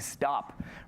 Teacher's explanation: Stop is voiced almost. It almost sounds like a D.